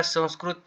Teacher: या ठिकाणी पहा संस्कृत या शब्दाचा आपण जेव्हा उच्चार करतो तेव्हा पहा की सण म्हणजे स वरील अनुस्वार हा न चा उच्चार करतो